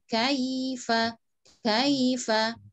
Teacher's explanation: jangan lupa kaifah tidak buru-buru dia ada sedikit panjang